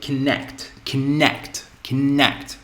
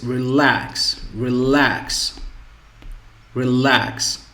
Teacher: So the stress is on the second syllable.